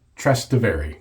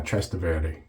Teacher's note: You're supposed to stress the middle syllable